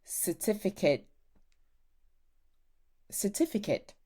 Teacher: I love a glottal stop, I don't pronounce the T, especially because of where I live.